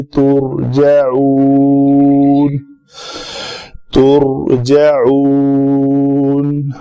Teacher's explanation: نون پہ آ کے آواز بھی بند اور سانس بھی بند